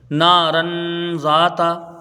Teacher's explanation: نون کے ساتھ الف مدہ ہے، ایک الف کے برابر کھینچ کے پڑھا جائے گا۔ را کے اوپر دو زبر کی تنوین ہے، تنوین کے بعد حروف اخفا کی ذال ہے، تو یہاں ایک الف کی مقدار غنہ کریں گے، ٹھیک ہے، اخفاء حقیقی ہوگا۔